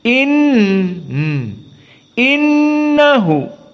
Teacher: Hamzah khalaf al-asyir yaakquub Semuanya sama tidak ada khilaf innahu maka Nun musyaddadah ghunah maka makhrajnya dari hidung